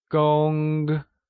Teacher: Gong is pronounced using a high-level tone, like gong.